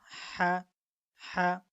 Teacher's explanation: পার্থক্যটা হলো আমরা যখন বাংলা হা বলি তখন এই হাটা আমরা উচ্চারণ করি মুখ থেকে, কিন্তু যখন আমরা হা বলবো তখন তার উচ্চারণটা হবে আপনার গলার ভিতর থেকে